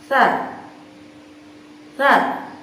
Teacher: ketika ujung lidah ditempelkan atau dihadapkan kepada ujung gigi seri atas, maka bagian tepi lidah yang paling depan itu menjulur sampai terlihat pada permukaan bibir